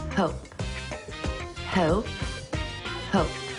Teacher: from Southern to standard is to shorten the vowel